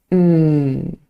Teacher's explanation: H both my lips are closed when forming the sound M so if both my lips are closed that means the air cannot Escape through my mouth instead the air escapes through the nose M and that is actually why we call it a nasal